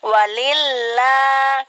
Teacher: Jadi kalau sebelum Allah itu hurufnya ada kasroh, berarti dibaca tipis, yaitu a ya, berbunyi a, walillah gitu.